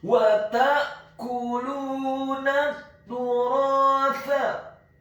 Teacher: huruf kafnya dibaca tipis, dhammah 1 harokat